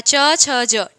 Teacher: चवर्ग का उच्चारण स्थान तालु